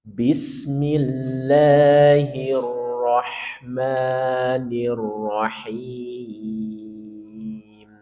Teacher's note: Nada tiga itu turun.